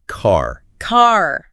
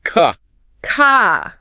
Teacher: Americans tend to pronounce Rs very clearly, especially at the end of words. · in British English, that R at the end of the word often softens or disappears completely. So car becomes more like ka. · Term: the R sound